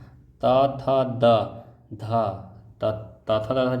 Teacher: ध का उच्चारण स्थान। त थ द ध, त थ द ध जितना है वो दांत से निकलता है।